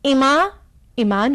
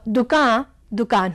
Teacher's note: अंतिम अनुनासिक आकार को आन कर दिया गया जैसे इमा ईमान हो गया और दुका दुकान हो गई बीच